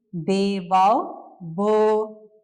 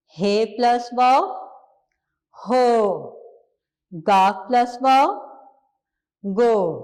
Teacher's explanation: हमें इसके वाव की आवाज़ की भी पहचान हो गई कि हमने वाव की आवाज़ ओ में निकालनी है। हमारे होंठ ओ पर गोल हो जाएंगे।